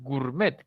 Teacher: Es norma extranjera de acuerdo aquí nadie dice gourmet decimos gourmet casi desaparece la O solamente queda la u cuando es un diptongo descendente por Norma debe sonar más fuerte